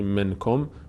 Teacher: نون از مخرج خودش ادا نمیشه، نون رو از اون حالت طبیعی ادا نمی‌کنیم، از بینی ادا میشه صدای نون با مقداری مکس در هنگام تلفظش که ما بهش میگیم، مثلا اینو میگیم اخفا به خاطر مخفی شدن مخرج نون در بینی و این قاعده بهش گفته میشه اخفا.